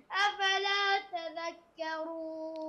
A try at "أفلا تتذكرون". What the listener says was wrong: أفلا تتذكرون، في تائين.